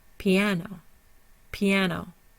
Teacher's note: our primary stressor is on the second syllable before the N our secondary stressor is on the o · so our primary stressor is on the second syllable